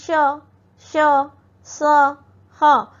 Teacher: इसे इसे ऊष्म व्यंजन कहा जाता है। श का उच्चारण तालु से, श का उच्चारण मूर्धा से, स दांतों से और ह का उच्चारण कंठ से किया जाता है।